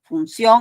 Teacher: ahí tienes la I, tienes la O, que da la mayor fuerza de voz, la O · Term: diptongo